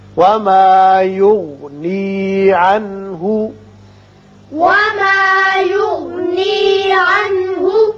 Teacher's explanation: عنہ میں نون ساکن کے بعد ہا ہے جو کہ حروف حلقی میں سے ہے، لہذا یہاں اظہار حلقی ہوگا